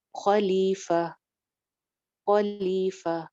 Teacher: تن ہے تا دو زبر تن ہے لیکن اگر ہم اس کے اوپر وقف کریں گے تو یہ جو گول تا ہوتی ہے یہ سائلنٹ ہا میں چینج ہو جاتی ہے